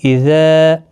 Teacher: اذا یہاں پر مد منفصل ہے، 3 الف کی مقدار کے برابر کھینچ کر پڑھیں گے۔ جب بھی حروف مدہ کے بعد حمزہ بشکل الف آتا ہے تو مد منفصل لگتی ہے، اور جب بھی حروف مدہ کے بعد حمزہ کی شکل میں حمزہ آ جاتا ہے ایک ہی کلمے کے اندر تو یہاں پر مد متصل لگتی ہے۔